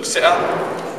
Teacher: This is a glottal stop, like, so you stop in the glottis.